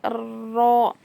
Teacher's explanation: जुबान का किनारा जो होता है वह हम क्या करेंगे ऊपर के जो चार दांत है ना उसके मसूड़ों में लगाने से र अदा होता है